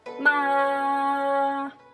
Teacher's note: the first tone is high and flat, and just keep your voice even, just like you practice your vocal.